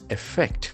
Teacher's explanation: The accent falls on the second syllable.